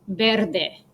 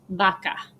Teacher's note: when the V is followed by an A or an E, it sounds like the soft B sound